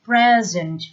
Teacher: make sure that you pronounce this word present with the stress on the first syllable